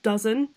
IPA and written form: ˈdʌz(ə)n (Dozen)